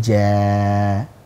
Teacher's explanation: alif tidak memiliki sifat gunnah. Makanya enggak boleh keluar dari hidung. Jadi enggak boleh ja, tapi ja.